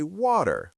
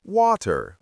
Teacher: In American English, people might say water with a d sound, while in British English, it's often water with a t sound.